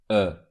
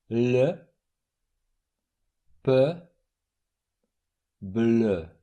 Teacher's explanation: In order to pronounce this sound, try to say the closed e sound rounding your lips at the same time. This is a closed version of this sound.